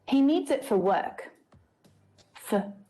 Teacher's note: just like all of the other examples that have come before the vowel sound reduces down to become the schwa sound